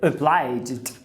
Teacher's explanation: A tônica é o bly. Logo, esse o vai ser um schwa.